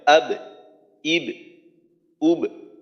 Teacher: যেহেতু বা পাতলা হরফ ইস্তেফালের হরফ তো কলকলাটা হবে নিম্নমুখী যেন আব ইব ইব এমনটা না হয় আব ইব উব পাতলা